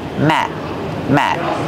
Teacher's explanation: the letter T at the end of the word Matt is a stop T we don't say Matt we stop the air we don't release the sound